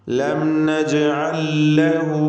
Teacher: നജ്അൽ എന്ന പദത്തിൻ്റെ അന്ത്യത്തിൽ സാക്കിനത്തായ ലാം, ശേഷം മുതഹറിക്കത്തായ ലാം, 2 ലാമും ഒന്നാക്കി ഒറ്റ മുഷദ്ദദത്തായ ലാമാക്കി ഉച്ചരിക്കുക, ഇദ്ഗാം ചെയ്യുക. ലം നജ്അൽ ലഹു, ലഹു എന്നതിലെ ളമീറിന് മദ്ദുസ്സിലത്തി സുഗ്റ നൽകി 2 ഹറക്കത്തിൻ്റെ അളവിൽ ദീർഘിപ്പിക്കുക.